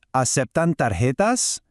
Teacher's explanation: the clear, breathy H sound made by the letter J in the word for cards, which is tarjetas.